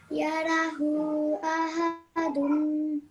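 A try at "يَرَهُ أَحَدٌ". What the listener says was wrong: Okay, remember this is ha with a mud saghir should be said for at least 3 seconds. Right now you're only saying it for 2 seconds. So simply yara because of the fatha on both of them. Yara, and then the hu has a mud saghir, so you stretch that for 3 seconds minimum. Ha dun because of the mud.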